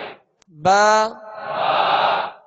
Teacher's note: दोनों होठों के तर हिस्से से बा अदा होता है इसको बा यानी खुश्क हिस्से से अदा नहीं करेंगे बल्कि बा